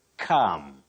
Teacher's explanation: Calm, no. The L is silent.